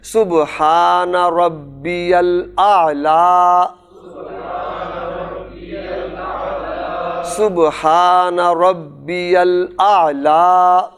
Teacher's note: لا پر کھڑا زبر پڑھیں گے، لمبا کریں گے